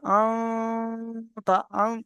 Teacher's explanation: আওয়াজটা গুন্না হওয়ার কারণে ভিতরে নাকের ভিতরে চলে যাচ্ছে। দেখেন, নাকটা যদি বন্ধ করে যদি আমি চেপে ধরি আঙুল দিয়ে, তাহলে আর আওয়াজটা হবে না। · নাকে উঠে যাবে, নাকটা কাঁপবে, হালকা নাকের ভিতরে উঠে যাবে